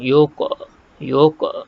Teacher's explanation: Huruf qaf yang mati ni kita lantunkan dia. Ada qalqalah. Qalqalah sughra.